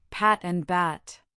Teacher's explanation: For pat, the sound is unvoiced and breathy. For bat, it is voiced with your vocal cords vibrating.